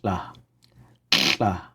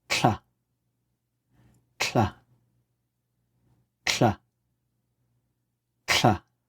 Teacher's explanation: the pinched L comes out the sides of your mouth, and the pinched TL comes out the front. It has a bit more launch to it. · So the pinched L would have a longer drawn out sound, like la, la. And the TL would come out much faster. In addition, the pinched L comes out the sides of your mouth, and the pinched TL comes out the front.